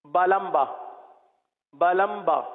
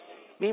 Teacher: اب میم جہاں سے ادا ہوتا ہے اس سے تھوڑا سا قریب ہی با ادا ہوتا ہے